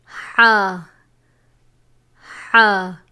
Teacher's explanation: حلق کے درمیان والے حصے سے ادا ہوتا ہے